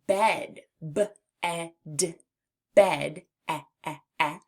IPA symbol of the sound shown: ĕ